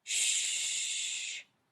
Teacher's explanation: When you say shh, you can continue to make the sound for a long time.